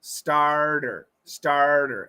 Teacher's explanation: it's a flap T so you got to get that it's got to be fast